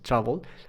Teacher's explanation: Aquí esta pequeña schwa se vuelve como una especie de O. Entonces es una vocal corta.